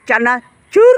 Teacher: আমার জিহ্বার অগ্রভাগে কিন্তু কম্পন তৈরি হয়েছে এই শব্দটি বলার সময়